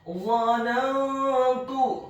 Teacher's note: Apabila ada huruf nun yang sukun atau tanwin, dalam hal ini adalah huruf nun yang sukun bertemu dengan huruf-huruf ikhfa, di antaranya adalah huruf ta yang dhammah, maka hukum bacaannya adalah dibaca secara samar-samar ikhfa.